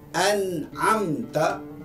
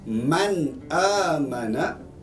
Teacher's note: Tak boleh dengung, dia mesti terang, nyata dan jelas. Ia berlaku apabila nun mati ataupun tanwin bertemu salah satu di antara huruf-huruf yang 6 tersebut. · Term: izhar